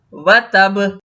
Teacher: با جب ہم نے وقف کیا تو با ساکن ہو گیا۔ ساکن با پہ ہمیشہ قلقلہ۔ وتب، تبت یدا ابی لہب وتب، ما اغنی عنہ مالہ وما کسب۔